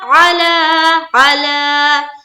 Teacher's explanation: अब देखिए यहाँ पर कोई कायदा नहीं है, बस लफ्ज अल्लाह का लाम को क्या करना है, पुर करना है, और आयन को जल्द पढ़ेंगे, जबकि लाम को खींचेंगे